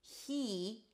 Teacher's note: It's an H sound, then a high E. He, and then you shift to the R.